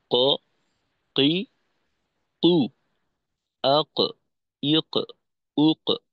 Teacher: তো সেক্ষেত্রে জিহ্বার গোড়া উপরের নরম তালুর সঙ্গে লাগাবো। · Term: কফ